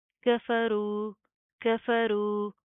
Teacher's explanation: تو یہاں پر کیا ہے کہ یہاں پر ہم پہلے غنہ کریں گے اور پھر اس کے بعد اس میم کو اسلام کے ساتھ پلس کیا جائے گا. کفرو کفرو را کو پروپر منہ کو پور کر کے پڑھیں گے موٹا پڑھا جائے گا